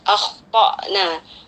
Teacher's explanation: jangan lupa dibaca dengan memenuhi sifat isti'ala dari huruf kha ya. Jadi tidak cukup dibaca tapi ya, kita tebalkan akhtana.